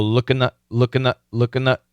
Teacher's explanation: so that n definitely can cancel that th